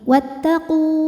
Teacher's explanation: Wattaqu kalau berhenti hukumnya adalah mad thobi'i. Karena wau sukun didahului dhammah. Panjang dua harakat kalau berhenti. Wattaqu. Namun kalau terus jadi pendek gugur madnya.